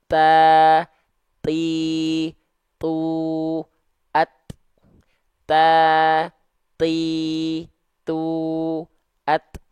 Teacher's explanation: huruf ta itu kenapa dia percikan nafas sifat hamsnya karena dia disandingkan dengan sifat namanya adalah syiddah · Ya, syiddah itu tertahan suaranya. Karena suaranya tertahan, akibatnya agak mampet sifat nafasnya. Jadinya percikan.